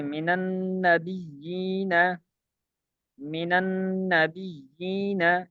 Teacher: بیان کر رہے ہیں کہ پہلا ساکن من کا نون ہو، پہلا ساکن من کا نون ہو تو اسے فتح دیں گے